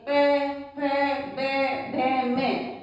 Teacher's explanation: होठों को बंद करके बोला जाता है। इसलिए ओष्ठ कहलाते हैं। · प, फ, ब, भ, म, तो आप बोल के देखिए, आपको खुद लगेगा कि हम होठ को बंद करके बोल रहे हैं, इसलिए ये प वर्ग वाले ओष्ठ ध्वनि कहलाते हैं।